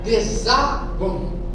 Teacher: Tônica na penúltima sílaba. Então é uma palavra paroxítona.